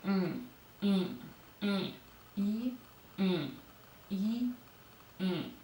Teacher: E would be nasalized like e, e, e, e, e.